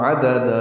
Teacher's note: عدد دونوں دال نرمی سے پڑھے جائیں گے، باریک، اور دوسرے دال کو 2 حرکات لمبا کریں گے